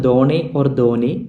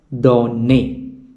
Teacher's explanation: Since there are two n, there is a doubling of the sound.